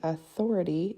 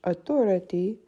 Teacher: In English, the stress is on the THO in the middle of the word, whereas in French, autorité, the E at the end of the word is where the stress is.